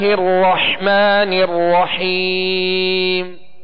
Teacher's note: بس، اب اس میں سکون ہے تو اس میں کامل سکون ادا کریں گے، اور اسی طرح آگے را جو مشدد ہے اس کو بھی دوہرا پڑھیں گے · سین کی آواز کو سیٹی کی آواز میں واضح کریں گے، سیٹی کی آواز اس میں پیدا ہوگی۔